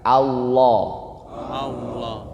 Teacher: Lam tebel itu nggak monyong Bapak Ibu